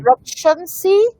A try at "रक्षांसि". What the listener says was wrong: রক্ষাংসি, হ্যাঁ রক্ষাংসি আকার আছে।